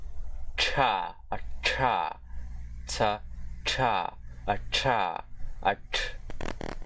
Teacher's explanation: the voiceless retroflex aspirated plosive consonant